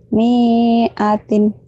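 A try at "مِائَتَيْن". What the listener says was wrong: Gak ada yang panjang kalau itu. Miatin gitu.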